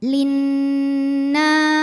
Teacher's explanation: lam syamsiah linasi nunnya dihukumi dengan gunah musyaddadah karena Nun bertasdid cara bacanya dengung bunyi n-nya tahan sampai ada suara masuk hidung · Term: gunnah musyaddadah